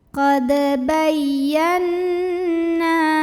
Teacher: Nunnya adalah gunnah musyaddadah karena nunnya bertasydid. Maka cara bacanya didengungkan. Tahan dengungannya kurang lebih 2 harokat.